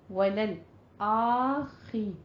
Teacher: لل میں آپ نے قلقلہ نہیں کرنا، لام کو سٹاپ کرنا ہے، جزم ہے. وللآخی، خوا کو پر پڑھنا ہے، الف پہ حمزہ پہ فتحہ قائمہ ہے اور خوا کو پر پڑھتے ہوئے کسرہ کی آواز کو باریک رکھنا ہے، را کو بھی پر پڑھنا ہے.